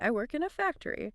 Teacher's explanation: And then there's intonation, the way your voice goes up and down, like, I work in a factory. Going up at the end makes it a question.